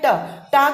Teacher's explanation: टा को देखेंगे आप, आपकी जीभ पलटती है ट, तो जहां पर वो गड्ढा वाला पार्ट आपका जीभ का पड़ता है वो कहलाता है मूर्धा।